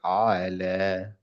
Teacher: না, এটা হামজার মতো হয়ে যাচ্ছে। এটা আইনের উচ্চারণটা একটু সফট হবে।